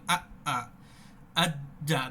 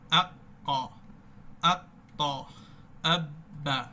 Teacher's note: মূলত এই আওয়াজের বৈশিষ্ট্য হচ্ছে আওয়াজ বন্ধ রাখা, আর যেই হরফে আওয়াজ বন্ধ থাকে সেই হরফে বাতাসও বন্ধ থাকবে।